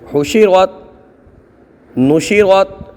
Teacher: بعض طلبہ اس کو حشیرت شین کی حرکت کو کھینچ دیتے ہیں جبکہ نہیں کھینچنا چاہیے